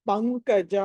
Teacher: ప తర్వాత అనుస్వారం ఉంది, అందుకని తర్వాత క వచ్చింది కాబట్టి దీన్ని పంచమాక్షరం పంకజ అని పలకాలి